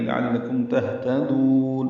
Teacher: تا باریک دال کو لمبا کریں گے